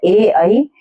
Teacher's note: कंठ तालव्य वर्ण जो होते हैं ए, ऐ, ये कंठ और तालु को छूते हैं।